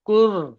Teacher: র সাকিনের ডানদিকে পেশ আছে তাই র কে পুর করে পড়তে হবে